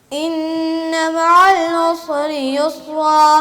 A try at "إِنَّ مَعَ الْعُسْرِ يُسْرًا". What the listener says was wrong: اچھا عین کیوں کھا گئے آپ؟